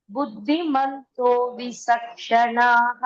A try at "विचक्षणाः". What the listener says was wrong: विचक्षणाः. There is no s, not visak, no visa over there. Cha should be sounding as cha only. Vichakshanaha.